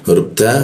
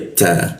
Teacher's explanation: Huruf ta posisinya ujung lidah bertemu gigi dia ta ya ada bocor halus seperti itu.